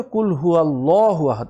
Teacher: আল্লাহ মুখ রাউন্ড হয়ে ফুল মাউথে উচ্চারণ হবে